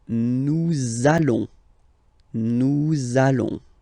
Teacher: Okay, and if you, so final S not pronounced, and then if you are purist, and I'm sure you are, you want to make this beautiful and little liaison, so this little link between the words, so it does mean that you will have to pronounce this z sound